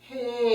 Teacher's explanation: the tiny little transition from an H, unvoiced, to the very front edge of the vowel. And that's where we would like to navigate, is right along that joining.